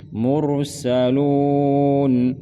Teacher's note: Mur tebalkan ra, tafkhim